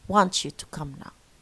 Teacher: so cha replaces both ta and ya. That's why we call it reciprocal, because both are affected.